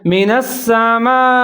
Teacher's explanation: او کصیب من السماء، من السماء، نون کے اوپر زبر ہے، سین کے اوپر زبر ہے اور شد ہے، یہاں بھی آپ نے غنہ کرنا ہے۔ من السماء، یہاں میم کے بعد مد آ رہا ہے تو اس کو آپ نے 3 سے 4 سیکنڈ تک لمبا پڑھنا ہے، اس کو مد متصل کہا جاتا ہے، اور آگے حروف مدہ کے بعد جانی پہچانی لفظ ہے حمزہ، تو یہ سنگل لفظ کے اندر آ رہا ہے تو اس کو آپ نے پڑھنا ہے من السماء۔